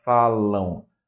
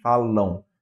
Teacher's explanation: esse m tem som de u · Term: nasal decrescente